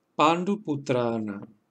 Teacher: la na ha sufrido una retroflexión convirtiéndose en na, porque va precedida de una ra